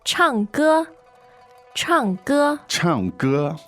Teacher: And it's fourth tone. So fourth and first.